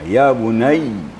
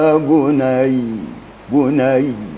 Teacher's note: Kalau kita berhenti atau wakaf pada huruf ya, maka harus dengar tasdidnya